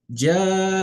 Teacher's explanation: this is called al-maddu al-wajib al-muttasil. So this med will go for at least 4 counts.